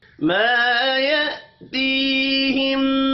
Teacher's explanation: یہاں پر حمزہ ہے، اس کو الف نہیں پڑھنا · ما الف مدہ ہے، ایک الف کے برابر کھینچ کر پڑھیں گے